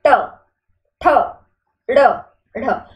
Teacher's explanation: उत्क्षिप्त व्यंजन की बात करें तो जब आप कोई वर्ण बोले और आपकी जीभ का जो आगे का भाग है वो ऊपर उठ के झटके से नीचे आ, जैसे ट ठ ड ण, आप बोल के देखें ट ठ ड ढ, तो इसमें आपकी जो जीभ है उसका आगे वाला भाग थोड़ा सा ऊपर उठता है फिर झटके से नीचे आता है, इसे हम बोलते हैं उत्क्षिप्त व्यंजन।